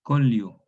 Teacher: Esta consonante fricativa intervocálica se pierde